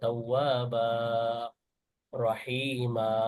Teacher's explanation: তাওয়াবান না বলে 2 হারাকাত টেনে পড়তে হবে। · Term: মাদ্দে ইওয়াজ